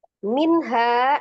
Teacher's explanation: Ya kulu yaitu hati-hati ya, itu hamzah ya, hamzah sifatnya seddah, jadi ya kulu. Minha nun sukun ketemu dengan huruf ha-nya izhar halqi, karena ha adalah salah satu huruf al-halqi ya, yang dari tenggorokan, maka dihukumi izhar dibaca dengan jelas, hanya nunnya tampakkan sifat tawasud atau bainiyahnya.